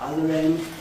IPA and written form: ˈʌðər ˋend (other end)